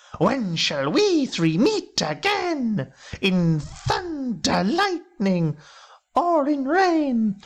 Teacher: more or less 8-syllable lines of poetry with a stressed syllable and then an unstressed syllable. So creating a ba-boom, ba-boom, ba-boom, ba-boom effect. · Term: trochaic tetrameter